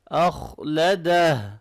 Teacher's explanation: ما لہو اخلدہ، خوا کو موٹا پڑھیں گے